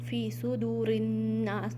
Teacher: हमज़तुल वसल means silent अलिफ, रा को आपने नून में मिलाना है। फ़ी सुदूरिन्नास, नून मुशद्दद मीन्स यहाँ पर आपने गुन्ना करना है, फ़ी सुदूरिन।